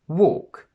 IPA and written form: wɔ:k (WALK)